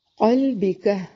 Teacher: قاف کو موٹا، لام کو باریک، با کو بھی باریک اور کاف کو بھی باریک پڑھیں گے